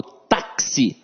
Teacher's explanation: Não, eu falo táxi. Então, esse X aqui tem um som de KS